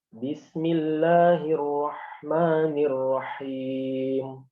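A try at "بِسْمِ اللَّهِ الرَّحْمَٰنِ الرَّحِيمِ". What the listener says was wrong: Nah, sahih. Seperti itu ya.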